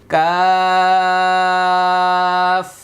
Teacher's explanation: জিহ্বার গোড়া হতে একটু আগে বাড়িয়ে তার বরাবর উপরে তালুর সঙ্গে লাগিয়ে একটি হরফ উচ্চারিত হয়